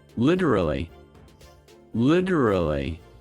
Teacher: Fast. And the middle kind of vanishes.